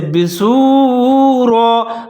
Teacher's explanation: واو ساکن ہے، دونوں کو ملا کے پڑھیں گے جیسے بسورا، را کو موٹا پڑھنا ہے